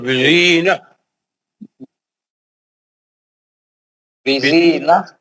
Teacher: بزینہ تا مربوطہ جو ہے وہ ہا سے بدل جاتا ہے